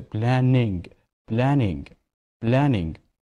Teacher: the stress is in the second syllable